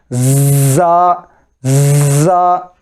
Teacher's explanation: دونوں دانتوں کو دبا کر، اور جیسا کہ وہ مچھر وغیرہ اگر ہمارے کانوں کے پاس آ کر آواز دے تو آتی نا آواز کے ایسی آواز آتی ہے نا، ویسے ہی انداز میں زا.